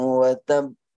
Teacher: ada tahan dulu, ada tasdid di situ, kemudian ada qalqalah